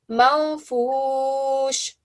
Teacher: When we read it, we hide the noon. So rather than saying manfush, I will say manfush.